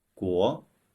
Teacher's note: with the second tone, the rising tone, guo. Let's repeat.